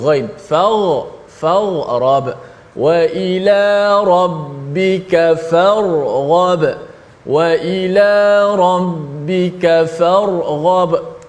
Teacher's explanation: makhraj ra hujung lidah, ghain berada di hujung halkum. Jauh beza makhraj. Tapi bunyinya seakan-akan kalau tak kena nak nampak lebih kurang.